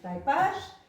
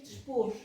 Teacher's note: Também o ditongo ai e o ditongo oi, antes do S final, se monotongaram. Aqui dizia-se até há bem pouco tempo, em vez de taipais, taipás, em vez de mais, más, em vez de pardais, pardás, e em vez de depois, dispôs.